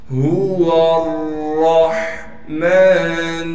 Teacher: ہاں کو صاف کر کے گلے سے نکالیں گے، گلے کا وہ حصہ جو سینے کی جانب ہے